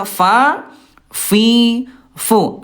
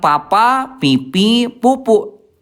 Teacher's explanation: Ini Bunda huruf fa pertemuan antara ayah bunda bibir dalam ya bibir dalam bagian bawah ayah bunda disentuhkan dengan ujung gigi seri atas